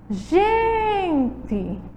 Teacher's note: O gen é a sílaba tônica e a palavra é uma palavra paroxítona e recebe a letrinha E.